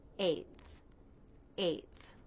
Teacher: the unvoiced TH where the tongue tip comes through the teeth.